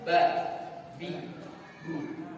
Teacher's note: Ba punya sifat namanya syiddah juga, terputus suaranya.